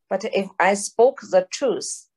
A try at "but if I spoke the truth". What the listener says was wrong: okay, close, truth with the th, the truth.